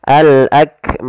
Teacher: Karena kita waqaf maka mimnya menjadi mim yang sukun, maka dimatikan. Dan sebelum huruf matinya ada huruf alif yang menandakan itu huruf mad, maka menjadi panjang. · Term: mad arid lisukun